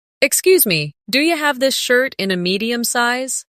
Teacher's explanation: Listen to how do you becomes do ya in natural speech. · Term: connected sound